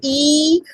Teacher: it is closed and from the front position of the tongue